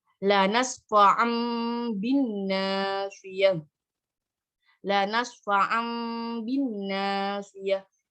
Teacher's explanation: iqlab artinya mengganti bunyi bacaan nun mati atau tanwin menjadi mim. Jadi kalau iqlab ini mengganti huruf iqlab jika bertemu dengan nun mati atau tanwin itu baik tanwin fathah, tanwin kasroh, tanwin dhamma itu diganti dengan bunyi mim.